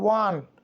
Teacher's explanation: ও যদিও কিন্তু ওর মতো উচ্চারণ না হয়ে ওয়ার মতো উচ্চারণ হচ্ছে , যে কারণে ঠোঁটটা ওয়া মানে ঠোঁটটা এখানে প্রসারিত হচ্ছে বা